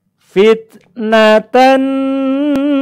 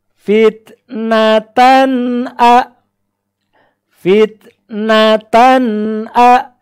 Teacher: tidak boleh dipanjangkan kita perhatikan contoh fitnatan atau Sebiru ini fitnatan suara tanwin pada huruf Tan itu tidak boleh di tahan lama tidak boleh kita membaca seperti ini fitnah tenun atau Sebiru itu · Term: tanwin izhar